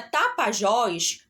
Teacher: a sílaba tônica da palavra Tapajós Ela está na última posição é a última sílaba